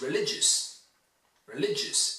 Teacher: Religious, it's stressed on the second syllable. Le. The only syllable you really need to hear is lig.